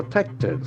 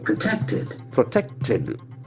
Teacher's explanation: accent falls on the second syllable